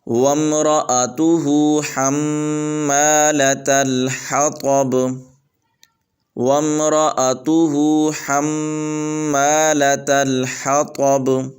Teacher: آگے با پر قلقلہ ہے